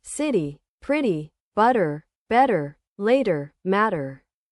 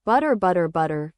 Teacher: Very soft and smooth. The flap T is not a T or a D. It's a quick tap